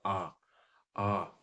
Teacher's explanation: पूरे स्वरों के उच्चारण में सबसे ज्यादा अगर मुंह खुलता है तो आ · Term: विविध स्वर